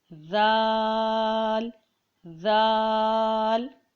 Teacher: زبان کا جو ہمارا شروع حصہ ہے اس کو ہم دانتوں سے لگائیں گے